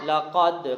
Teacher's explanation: لقد قاف کو موٹا پڑھیں گے، دال پر قلقلہ کریں گے